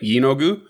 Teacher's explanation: it's an emphasis on the first syllable